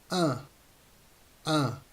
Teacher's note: the mouth is open it's not wide open but it's open the tongue is in a neutral position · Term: second nasal sound of French